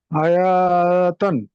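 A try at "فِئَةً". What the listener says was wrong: ইয়াতান, ইয়াতান, ইয়াটা স্পষ্ট করতে হবে। হুম, না না না না, ফিয়া টান হবে না, ফিয়াতান। আবারও বলছি, জবরদের পেজ যেখানে মাদ নেই সেখানে, জবরদের পেজ যেখানে, অর্থাৎ জবরদের পেজ থাকবে সেখানে মাদ হবে না যদি মাদের পরবর্তীতে মাদের অক্ষর না থাকে। যখনই জবরদের পেজ থাকবে তখন দ্রুত উচ্চারণ করতে হবে, ফিয়াতান।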